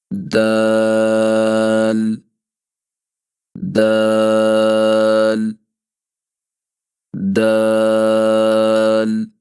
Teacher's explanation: دال زبان کی نوک اور سامنے اوپر والے 2 دانت ان کی جڑ سے لگے گی۔